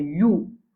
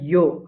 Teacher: Ya dhamma fait you. Ne pas dire yo.